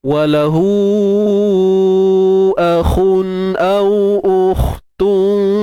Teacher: kha yang mati angkat pangkal lidah tuan-puan. Kha mati, kha ni huruf tebal kan?